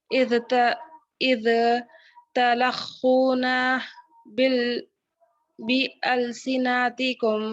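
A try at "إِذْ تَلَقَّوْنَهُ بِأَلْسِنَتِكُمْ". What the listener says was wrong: پھر سے پڑھیے تلخونہ نہیں ہے، دیکھیے آپ ذرا نہیں، لام پہ آپ پیش لگائے، تلا قاف پہ تشدید ہے نا.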